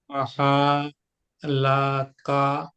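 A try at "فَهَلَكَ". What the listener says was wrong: হুম, এখানে কোনো টান দেওয়ার জায়গা নাই, আলিফ নাই এখানে, তাই না? তাহলে কি হবে? ফাহালাকা। কোনো টান নাই, সবগুলা একটাই টান, সেটা হচ্ছে আলিফের, আলিফ বাদের নর্মাল ফাথার যে টান সেটা।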